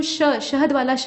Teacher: ये तालु से उच्चारण होता है, मतलब जीभ जो है ना आपकी तालु में जाकर सटती है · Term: तालव्य श